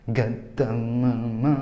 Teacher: Kalau di Yaman yang dibaca g itu qafnya